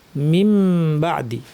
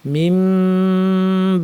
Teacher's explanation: মিম পড়ার সময় গুনাটাকে লম্বা করে সরাসরি বাতে চলে যান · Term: ইকলাব